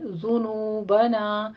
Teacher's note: ذنوبنا میں دیکھ لیجئے زال کے اوپر ضمہ ہے، ہونٹ گول ہونے چاہیے آپ کے، ذنوبا نہیں ہے، ذنوبنا۔